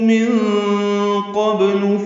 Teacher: نون ساکن کے بعد قوف آنے کی وجہ سے اخفا ہے، نون پہ آواز کو چھپائیں گے